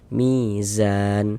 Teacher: Nih, baris miring nih harokat kasroh atau tanda baca kasroh. Soalnya mi dibaca panjang, mad tabi'i panjang 2 harokat.